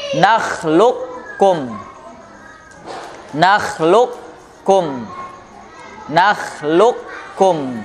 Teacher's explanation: Ibaratnya dia idghamnya itu idgham nakis ya. Nakhluq, ada qafnya masih nempel dulu agak ke dalam, baru kum.